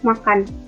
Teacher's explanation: bunyi sengau bilabial bersuara